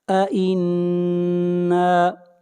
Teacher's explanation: نون کے اوپر غنہ کریں گے، نون مشدد ہے۔